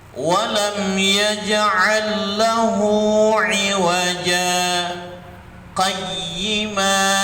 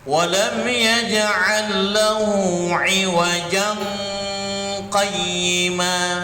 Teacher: saktah berhenti sejenak tanpa bernapas, kira-kira 2 ketukan